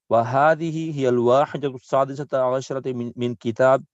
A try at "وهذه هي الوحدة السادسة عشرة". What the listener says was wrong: هي وحدة السادسة عشرة. Not واحدة, وحدة. From wow, jump straight on the ha. وحدة.